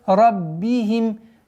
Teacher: Ра твердый. После ра на мягкий звук ба переходим с касой.